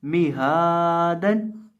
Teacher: हा को एक अलिफ के बराबर खींच के पढ़ेंगे